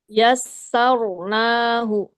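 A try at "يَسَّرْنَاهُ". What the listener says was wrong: kasih getarannya agak lebih dikit. Bahkan 1 pun cukup getarannya. Yasar. Jangan yasar. Beda ya. Ya, pengingat lagi untuk huruf ro. Ya, dia punya sifat khusus namanya takrir, getar. Cuma perlu perhatikan tadi getarannya jangan terlalu banyak, jangan juga sampai hilang.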